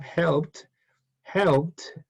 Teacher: the Ed is pronounced like a t